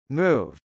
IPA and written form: mˈuv (move)